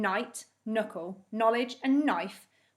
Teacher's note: we don't hear the letter k we hear that it sounds like it starts with an n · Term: silent k